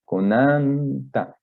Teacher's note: en este caso la fuerza hizo que ya no sonara como J, sino como K